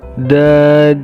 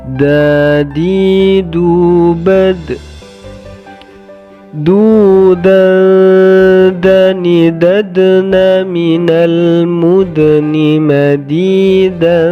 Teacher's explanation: huruf dal ketika sukun dipantulkan, nah, karena termasuk huruf qalqalah.